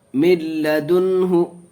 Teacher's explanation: نون ساکن کے بعد ادغام ارمنون کے 6 حرفوں میں سے لام آیا، بغیر گناہ کے پڑھیں گے